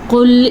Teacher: قل موٹا قاف، لیکن لام باریک ہے، لام کسی صورت میں بھی پر نہیں پڑھا جاتا